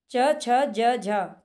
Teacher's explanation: तालव्य वर्णों में आते हैं च छ ज झ क्योंकि जब हम इनको बोलते हैं तो ये हमारी तालू को स्पर्श करते हैं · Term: तालव्य वर्ग